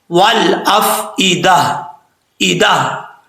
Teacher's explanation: وقف کریں گے تو تا کو ہا پڑھیں گے، ہا ساکن کر کے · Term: گول تا